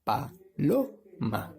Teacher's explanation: la fuerza o la sílaba tónica es producida en la sílaba lo